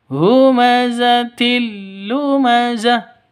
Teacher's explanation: Jadi, humazatil tanwin bertemu dengan lam sama ya seperti yang di depan ini. Idgham bila ghunah masuk ke lam tanpa deng dengung.